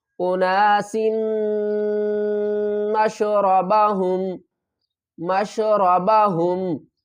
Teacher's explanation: سین کو ہم میم کے ساتھ ملائیں گے اور میم مشدد ہے تو یہاں پر ہم غنہ کریں گے